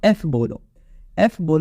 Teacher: आपका जो lower lip है वो आपके अपर टीथ के साथ कनेक्टेड है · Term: लेबू डेंटल